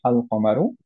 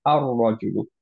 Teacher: কিন্তু যদি আমরা আম্যান, রজুলুন এরকম তার সাথে আমরা দি ম্যান করি, দ্যাট ইজ হচ্ছে আল সামনে নিয়ে আসি, তখন আমরা পড়বো হচ্ছে আর রজুলু। তখন লামটা র এর সাথে মার্জ হয়ে গেল।